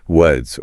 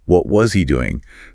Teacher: The strong form is was or W-ins. But in a sentence like, what was he doing? The vowel in was reduces to a schwa.